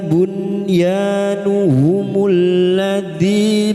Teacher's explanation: Yazalu bunyanuhumul ladzi bunyanun sukun bertemu ya idhar wajib nun sukun dibaca jelas tanpa mendengung